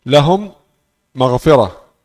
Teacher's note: Mim sukun masuk dalam mim berharakat fathah, kemudian mengucapkan dua mim ini satu mim bertasydid. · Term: idgham